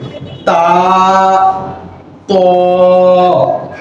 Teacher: তা, ত, তাটা একটু পাতলা করে, তা, ত, তা, ত, একটু খেয়াল করেন, তা একটু পাতলা হবে কিন্তু মাখরাজ একই হবে। জিহ্বার আগা সামনের উপরে দুই দাঁতের গোড়ার সাথে লাগবে।